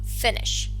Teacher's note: It is a voiceless post-alveolar fricative sound, sh.